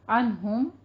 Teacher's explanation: عنہم نون کو لمبا نہیں کرنا، اظہار حلقی ہے